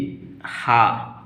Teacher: स्वर यंत्र मुखी हा गले के भीतर स्वर यंत्र के मुख से उच्चारित होता है।